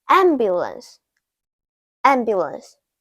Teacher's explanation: Ambulance, ambulance, the first syllable has a short A, am, am; the second syllable is bu, bu; the last syllable is lance, lance. The stress is on the first syllable.